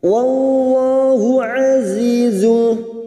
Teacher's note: azi kasrah bertemu ya sukun 2 harakat kita panjangkan. Azizun, zu dhamma tanwin pada huruf zain.